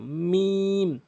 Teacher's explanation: দুই ঠোঁটের শুকনো অংশ